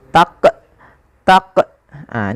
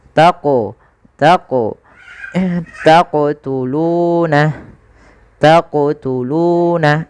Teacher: Qalqalah adalah bacaan memantul jadi ketika melafalkan huruf q itu ketika sukun dipantulkan nah kesalahan yang terjadi dalam membaca qqalah itu tidak memantulkan huruf